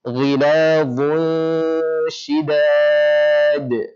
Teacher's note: Jadi dha tebalkan, kemudian langsung berubah di suara dengung menjadi tipis, ya, karena shin adalah huruf yang tipis. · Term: hukum ikhfa